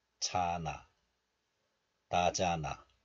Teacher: This one is pronounced as 잔 in isolation, and this letter is followed by a vowel of the next letter, and hiut is dropped, and then the remaining niun moves to the next letter. So a becomes na.